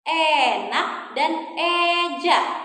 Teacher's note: ya punya bunyi vokal e madya atas depan